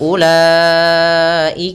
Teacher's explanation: pada lafal ulaika u-nya tidak boleh kita panjangkan, tidak boleh ula.